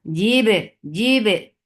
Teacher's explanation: there should be a very nice qalqala on ba because ba has qalqala and it is majhura. So there is no flow of breath, but it has a very clear sound of qalqala.